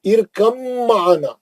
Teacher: با نہیں پڑھیں گے، اب میم میں چلے جائیں گے سیدھا. با ساکن کا میم مشدد میں ادغام میں متجانسین ہو گیا کیونکہ با اور میم ایک ہی مخرج سے نکلتے